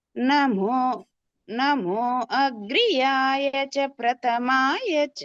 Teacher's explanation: నమోలో మా స్వరం కిందికి పైనకి వస్తుంది